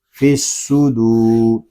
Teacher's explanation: دال کو ہم ایک الف تک کھینچ کر پڑھیں گے کیونکہ یہاں پہ واو مدہ ہو رہا ہے